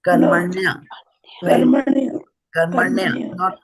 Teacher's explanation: no vowels between N and Y, right? And N has a dot, so ana.